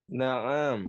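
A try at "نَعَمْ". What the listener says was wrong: Tadi yang bacanya pertama na'am, itu juga salah tuh. Ya. Ain itu tidak panjang. Ya, na'am, ya. Maka yang sahih na'am. Hadza qamisun, ya, bukan na'am, bukan ainnya panjang.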